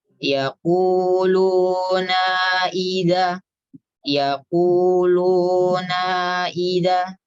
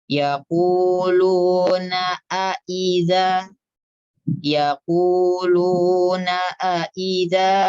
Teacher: Kesalahan yang pertama adalah dibaca tanpa mengatupkan pita suara.